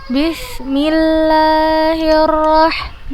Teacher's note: fathah bertemu dengan alif kita baca dua harokat mad asli · Kita panjangkan 2 harokat, jangan 4 harokat, karena dia mat asli.